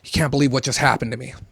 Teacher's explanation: he talks in a very very breathy very heavy way